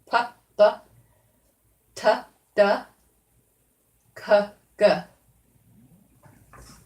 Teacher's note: stopping the air releasing it a little explosion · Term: stops